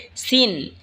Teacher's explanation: সিন জিহ্বার আগা সামনের নিচের দুই দাঁতের আগার দিকে লাগা উচ্চারণ হবে সিন। এই ঝা যেখান থেকে উচ্চারণ হয়েছে সেখান থেকেই সিন উচ্চারণ হবে।